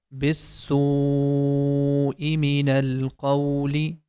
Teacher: that is a connected mad, and that's why we have to make the sound for 5 counts